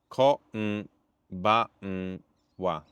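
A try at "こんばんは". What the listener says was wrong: You're doing English N, that's why. Their N is in the back of the mouth.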